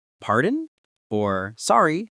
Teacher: pardon or sorry, both with rising intonation, like a question.